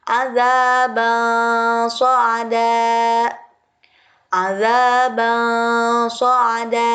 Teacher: Dibacanya harus samar dengan bunyi ang, harus disertai dengan gunnah atau dengung. Nah, itu adalah ikhfa.